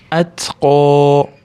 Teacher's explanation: qof yo'g'on harf, cho'zamiz ozgina, undan keyin mad bor.